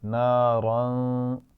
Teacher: नारन पे जो रा है ना, इसमें भी इसको मोटा पढ़ना है क्योंकि दो ज़बान है इसके ऊपर।